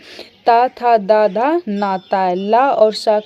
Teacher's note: त थ द धा न ता ल और स का उच्चारण स्थान भी क्या होता है? दंत ही होता है।